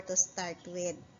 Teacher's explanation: "Ma'am, sir, may I offer you a glass of refreshing drink before your meal or to start with?" With, because it's a rising intonation because it is answerable by yes or no